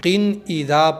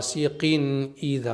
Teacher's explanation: बगैर गुन्ने के पढ़ेंगे यानी इस तनवीन पर हमें गुन्ना नहीं करना है